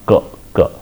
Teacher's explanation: All these are the consonants of unvoiced nature, and they are stops, because if you try to realize, you try to experience ka, where you have the vocal tract is completely closed at a velum portion, and then afterwards the release of that acts like excitation, and that produces that generates the sound ka, ka.